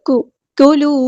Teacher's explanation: کلو کاف باریک سمپل بننا، قلو نہیں کرنا